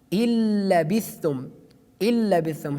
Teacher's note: Here we delete noon, which is sakin. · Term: idgham without ghunna